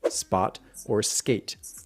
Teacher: You want the sound from English words like spot or skate, because those are not aspirated.